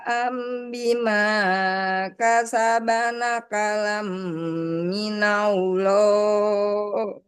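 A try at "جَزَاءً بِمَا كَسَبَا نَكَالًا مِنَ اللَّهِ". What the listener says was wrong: Ini za ya, tidak jim.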